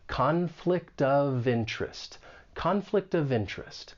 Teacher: We can link that final consonant sound in conflict with the beginning vowel sound in of, conflict of, and then we can link that consonant sound with the beginning vowel sound in interest. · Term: linking